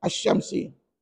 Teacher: tidak berdengung pada bacaan Sebab Dia melibatkan huruf syin